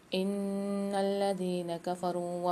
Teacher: ان الذين، اچھا نون کو لام کے ساتھ ملا کے پڑھیں گے، زال کے ساتھ یا ساکن ہے، زال کو ایک الف کی مقدار کھینچیں گے، کفرو میں را کے ساتھ واو ساکن ہے، یہاں پر بھی را کو کھینچیں گے اور کاف کو باریک پڑھیں گے کہ باریک کاف ہے۔